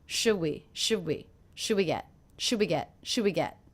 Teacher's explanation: should we get dinner one of the things I noticed is I'm dropping the D sound